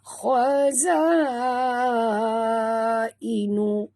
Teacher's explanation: Khaza, ini jangan baca khaza, baca kha tebal ya. Huruf kha adalah huruf isti'la.